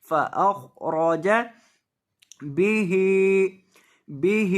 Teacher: با کو لمبا نہیں کریں گے ہا کو کریں